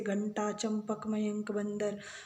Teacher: तो अनुस्वार का उच्चारण जो होता है वो केवल नाक से होता है